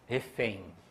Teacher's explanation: Então, por exemplo, nesta palavra, pessoal, 5 letras e 5 fonemas, porque a gente não pronuncia, a gente pronuncia ali como se fosse um ditongo decrescente nasal